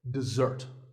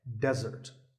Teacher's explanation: syllable is d and the second starts with a z sound we stress the second syllable